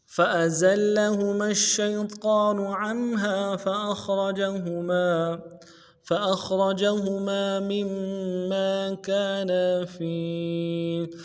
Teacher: فأزل لفظ فأزل میں فا کو نرمی سے ادا کرنا ہے، حمزہ کو بھی نرمی سے ادا کرنا ہے، زا کو آگے لام کے ساتھ ملانا ہے